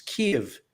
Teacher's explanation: it's actually two syllables it's kiev it's emphasis on the first syllable kiev originally we called it kiev which was not accurate it's